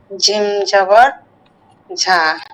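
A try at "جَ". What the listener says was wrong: আপনার মাখরা যে উচ্চারণ তো মোটেও ঠিক হচ্ছে না, এটা কেন? আপনি কি দ দ উচ্চারণ করতে পারেন না? ল আপনি তো একদম ঝ বলছেন, এটা তো হচ্ছে না। এই যে ঝাল বলছেন কেন? জাল, জাল জবর রা, রা রা।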